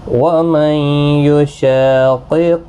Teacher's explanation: نون ساکن کے بعد یرملون کا یا ادغام مع الغنہ ہوگا۔ شا الف مدہ ہے، ایک الف کی مقدار کے برابر کھینچ کر پڑھیں گے۔